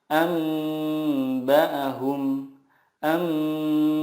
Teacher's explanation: mengganti nun sukun dengan mim sukun dan disertai gunnah 2 sampai 3 harokat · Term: iqlab